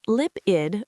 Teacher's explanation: It's pronounced lip-id with a short I sound and the stress on lip.